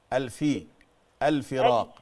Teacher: لا، الفاء مكسورة مش مضمومة